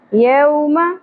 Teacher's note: واو ساکن سے پہلے زبر حرف لین نرمی سے پڑھیں گے. یو نہیں پڑھیں گے مجہول غلطی نہیں کرنی.